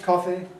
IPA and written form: ˡkɒfi (coffee)